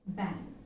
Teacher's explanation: the last phoneme which is actually a voiced velar nasal